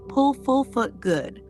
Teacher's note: This sound is short and soft. Your lips are slightly round. You say it quickly. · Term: short oo